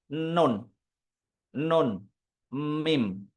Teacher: kalau mengucapkan Nun sama mim itu agak ditekan hidungnya pasti ada dengungan